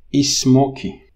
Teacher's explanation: in Portuguese, you insert this E in the beginning, word initial. So you can call this word initial epenthesis.